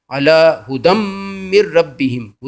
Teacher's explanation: ہدم وہاں پہ غنہ نہیں ہوتا، دال پہ دو زبر ہیں لیکن غنہ نہیں ہوگا بلکہ یہ آگے میم سے مل جائے گا